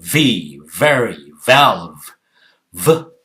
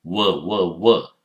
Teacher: You bite the lip, lower lip with the upper teeth and blow out.